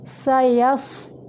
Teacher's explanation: سین سیٹی کے ساتھ باریک ہوگا